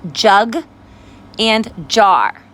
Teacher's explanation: your voice is turned on when you make the J sound, and it's a stopper consonant. That means we stop the sound short. J. We cannot hold on or stretch out that sound.